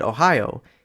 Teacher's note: we can have two consecutive diphthongs in a row, such as in the name of US state Ohio